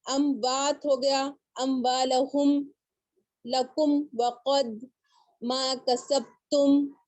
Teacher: جب بھی میم ساکن کے بعد واو اور فا اگر آئے تو وہاں پر آپ کو اچھی طرح اظہار کر کے پڑھنا ہے آپ کو. ٹھیک ہے, یہ نہ ہو کہ وہاں پر آپ سے غنہ ہو جائے. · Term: اظہار شفوی تاکیدی